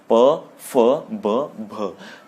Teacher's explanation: ऐसे ही ओष्ठ है, जब हम इन वर्णों को बोलेंगे प को बोलते हुए होंठ आपस में टच हो जाते हैं, इसीलिए सब ओष्ठ में आएंगे, प, फ, ब, भ।